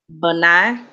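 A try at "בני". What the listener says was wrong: Good job. Good job.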